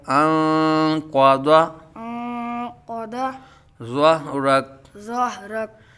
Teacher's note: دعات کو پر پڑھیں گے بیٹا، دعات حروف مستعلیہ میں سے ہے